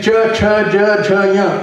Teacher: All sounds coming from the middle of the tongue.